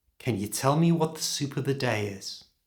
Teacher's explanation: Did you hear that I pronounced can as kun?